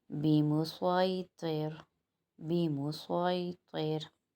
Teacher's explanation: صاد کا مخرج ہم پہلے بتا چکے ہیں کہ زبان کی نوک آگے کے نیچے کے دو دانتوں کی جڑ کو لگے تو صاد ادا ہوگا، اور صاد کیونکہ سیٹی والے حرف میں ہے تو یہاں پر سیٹی بھی آئے گی، اور صاد کو ہم موٹا پڑھیں گے۔ موٹا پڑھنے کے لیے زبان مخرج پہ تو لگے گی آگے سے، لیکن پیچھے سے یعنی تالو کی طرف سے اوپر کی طرف اٹھے گی